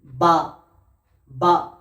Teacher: বা উচ্চারণ হয় দুই ঠোঁটের ভিজে অংশের সাথে লেগে